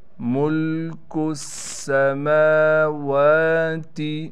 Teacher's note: ملک السماوات، کاف کو ہم ڈائریکٹ اس سین کے ساتھ ملائیں گے۔ سین پر تشدید ہونے کی وجہ سے ٹھہراؤ کیا جائے گا۔ میم پر کڑا زبر ہونے کی وجہ سے میم کو بھی ایک الف کی مقدار کھینچیں گے، اور واو پر بھی کڑا زبر ہونے کی وجہ سے واو کو ایک الف کی مقدار کھینچیں گے۔